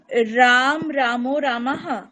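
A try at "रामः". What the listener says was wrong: না তো, প্রথম রূপটা তো রাম নয়, প্রথম রূপটা হচ্ছে রামঃ। রামঃ, রামৌ, রামাহ, এরকম হয়তো।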